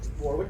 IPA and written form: ˈwɒrɪk (Warwick)